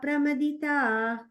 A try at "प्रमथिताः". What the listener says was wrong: there's a visarga at the end there.